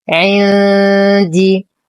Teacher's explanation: لدينا نون ساكنة وبعدها حرف الدال في كلمة واحدة، الحكم إخفاء حقيقي مع غنة كاملة مرققة